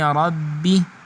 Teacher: اب رب میں را جو ہے اس کو پر پڑھا جائے گا، موٹا پڑھا جائے گا، کیونکہ اس را کے اوپر زبر ہے۔